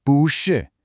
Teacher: The first word swings up into a second tone to create momentum, turning bu shi into a smooth, rolling bu shi.